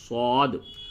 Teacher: صاد میں بالکل منہ بھر کے پڑھ کر کے آواز نکالتے ہیں